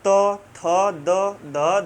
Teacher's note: जब आप त बोलेंगे तो ये जो जीभ जाकर सट रही है ये दंत में सट रही है